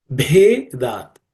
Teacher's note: The Bhe is again an aspirated consonant because it comes from the Bha, which is the fourth letter in the Per class of consonants or Per Varga.